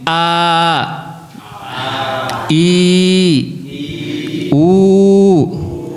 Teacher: Jadi a itu harus ee keluarnya dari pangkal gitu ya. Dan dia sifatnya jaher gitu ya. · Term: Hamzah